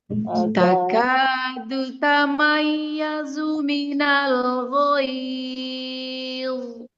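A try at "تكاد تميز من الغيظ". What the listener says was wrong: Nah, gid jangan gid ya. Jangan dimonyongkan. Jangan dimonyongkan.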